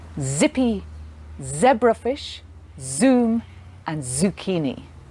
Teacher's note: z is a voiced sound in english which means you can feel it in your voice box you feel a vibration when you make that sound